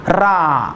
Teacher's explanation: जीभ टाळूला लावून मला हवा फेकावी लागते